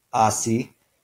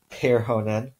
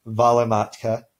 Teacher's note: where each of those first syllables is stressed because in Finnish this dress is always on the first syllable